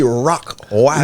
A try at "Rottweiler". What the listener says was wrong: No, it's Rottweiler. You're saying rock. It's rot. R-O-T. No, this dude said rock. He said rock. This dude was saying rock. I'm positive he was saying rock.